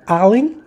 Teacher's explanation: O lem é a sílaba tônica.